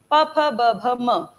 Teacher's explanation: प में आप दांत का यूज नहीं कर रहे हैं, होंठ का यूज कर रहे हैं, इसलिए ये है ओष्ठ्य।